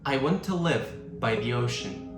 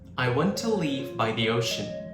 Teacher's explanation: Live has a short I sound, and leave has a long E sound.